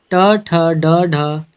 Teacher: ये हमारी मूर्धन्य ध्वनियाँ हैं